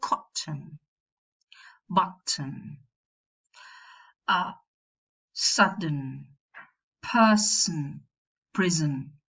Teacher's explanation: the nasal is very sonorous, so it constitutes a syllable on its own without the presence of a vowel. We don't have the schwa there. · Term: syllabic nasal, syllabic consonant